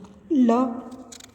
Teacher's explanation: यह हिंदी की अल्प प्राण सघोष वर्ष्य पार्श्विक ध्वनि है।